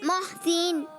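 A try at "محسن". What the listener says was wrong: मोहसिन नहीं, मोहसिन। हाँ, सीन है, सा नहीं है। आप जो यहाँ लगा रहे हैं ना, तो उससे सीन की आवाज़ नहीं आएगी, बल्कि सा की आएगी।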